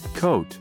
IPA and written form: koʊt (Coat)